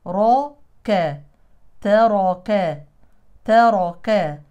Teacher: ترك راء مفتوحه مفخمه تاء مرققه